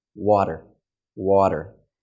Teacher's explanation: how the sound is actually pronounced what a flap is okay your tongue is just lifting up very quickly just water water and it's touching the area of your mouth